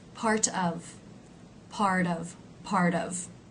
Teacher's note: When the T gets changed to a D sound, it does smooth out the line somewhat.